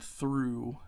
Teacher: through is an interdental, which means just your tongue goes in between your teeth, and that's voiceless. Your voice box doesn't move when you say that.